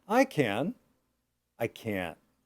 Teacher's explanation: So you can hear some disappointment in the negative, hopefully. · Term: intonation